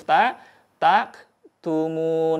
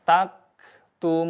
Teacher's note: Jadi sama-sama harus menyempurnakan sifatnya, yaitu sifat al-hamaz, mengalirkan suaranya ketika melafalkan huruf ta, baik dalam keadaan berharokat maupun dalam keadaan berharokat sukun.